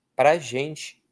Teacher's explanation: essa palavra ela é tão átona que ela perdeu um dos sons dela. Ela virou um pra. Quase sempre nós pronunciamos pra.